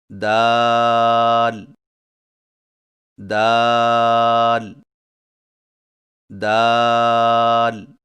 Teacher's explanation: دال کی ادائیگی میں زبان کی نوک کو سامنے والے اوپر کے دو دانتوں کی جڑ سے لگا کر باریک آواز میں پڑھیں